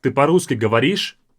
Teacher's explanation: More of same level, without those highs and lows of the intonation. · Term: more American way